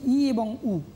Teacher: মুখগহ্বরটা কী হচ্ছে? একেবারে সংকুচিত হয়ে যাচ্ছে। মুখগহ্বরের মধ্যে বাতাস নেই বললেই চলে। মুখগহ্বর একেবারে সংবৃত অর্থাৎ বদ্ধ হয়ে আছে। · মুখগহ্বরের মধ্যে বাতাস নেই বললেই চলে। মুখগহ্বর একেবারে সংবৃত অর্থাৎ বদ্ধ হয়ে আছে। ই উ এই সংবৃত অবস্থায় আছে বলেই ই এবং উ এই দুটো স্বরধ্বনিকে আমরা বলছি সংবৃত স্বরধ্বনি।